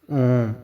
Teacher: इसकी मात्रा डबल होती है और देर तक उच्चारण होता है। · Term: प्लुत स्वर